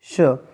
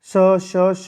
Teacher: श आपका संघर्षी व्यंजन है।